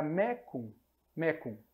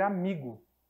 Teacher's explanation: o latim vulgar vai sonorizar o c